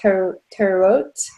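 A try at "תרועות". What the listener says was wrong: We don't really pronounce the E, so it's more like truot.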